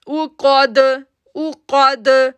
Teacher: کاف موٹا لیٹر ہے تو دال کے ساتھ جڑے گا تو ایکو ساؤنڈ بن جائے گا